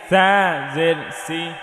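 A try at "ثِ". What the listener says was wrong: সি না, এটা থি হবে। জিব্বার আগা সামনের ওপরের দুই দাঁতের আগায় লাগিয়ে থা, নরম থা, থা জের থি,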